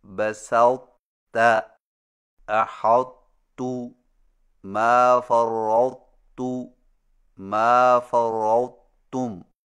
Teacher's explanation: تا کے موٹا پن کو ظاہر کرنے کے فوراً بعد تا بریک ادا کریں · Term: ادغام ناقص